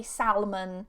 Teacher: some native speakers, depending on where they're from, they sometimes pronounce the L in salmon and they say salmon.